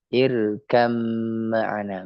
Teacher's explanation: Yang tadi awalnya adalah irkab ma'ana, jadi dimasukkan irkam ma'ana. Ba-nya jadi hilang, lebur langsung ke huruf mim.